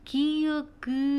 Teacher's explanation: 얘기를 하는데 그것은 이제 발음을 해보면 조금 더 정확하게 알 수가 있고 방해를 받지 않는다라는 건 너희가 발음할 때 막힌 소리가 없이 아, 야, 여 이렇게 나오는 거고 방해를 받는다라는 거는 뭔가 기읍, 그 이렇게 발음할 때 약간 울리는 소리, 긁는 소리처럼 나온다는 거지